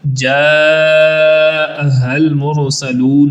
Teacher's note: جا کو لمبا کریں گے مد متصل ہونے کی وجہ سے، المرسلون کی را کو پر پڑھیں گے اور سین کو سیٹی جیسی آواز سے پڑھیں گے اور آخر پہ لمبا بھی کریں گے۔